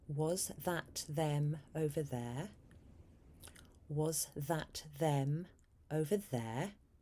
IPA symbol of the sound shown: ð